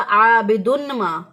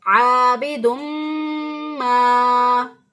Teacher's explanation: अगर इसको इजहार कर दिया, जाहिर करके तनवीन की आवाज़ को पढ़ा आबिदुन मा, तो गलत हो जाएगा। सही अदायगी है आबिदुम मा।